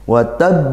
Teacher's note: qalqalah kubra karena dia dibaca waqaf dan bertasydid, lebih kuat lagi.